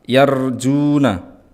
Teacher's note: Yar itu roknya tafkhim atau tebal karena diikuti oleh fathah. Juna ada waw yang sebelumnya ada dhammah, maka ini mat tabi'i 2 harokat